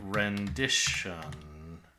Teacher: If someone said rendish on, you might think they were saying rendition. Because on doesn't always get pronounced so fully. It can be kind of swallowed into a schwa un.